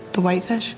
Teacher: all you do is turn the intonation up at the end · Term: yes-no question